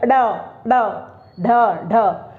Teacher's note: हमारी जिह्वा इसे झटके से बाहर फेंकती है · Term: फेंके हुए वर्ण